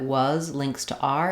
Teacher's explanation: was links to R and we can hear the z sound strongly on was